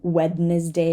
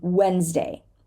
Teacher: We do not say the D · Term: silent D